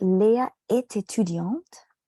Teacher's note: So the word est, which means is pronounced as e, which is the same sound that the word étudiante begins with. Yeah, so it feels like you're just putting one vowel sound in the air, and there's not much.